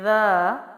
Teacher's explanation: دال جو ہے وہ نرمی والا حرف میں سے ہے، کھڑا زبر ہے، 1 الف لمبا کریں گے